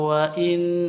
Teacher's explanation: minna, manna ini gunnah nun tasydid, terus wa inna juga gunnah nun tasydid